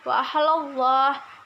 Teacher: lafaz Allah didahului oleh huruf hijaiyah lam berharokat fathah, maka dibaca dengan tebal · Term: tafkhim